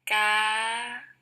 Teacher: tone ah so as you can see from this pitch contour it starts with a lower pitch and rises · it starts with a lower pitch and rises. That corresponds with this graphical representation of the pitch, which starts lower and rises. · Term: high tone